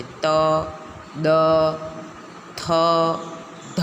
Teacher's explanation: દંત્યની અંદર ત અને દ. હવે આ ત અને દ બોલીએ છીએ ત્યારે આપણી જીભ દાંતને ચોંટતી હોય છે, દાંતને સ્પર્શ કરતી હોય.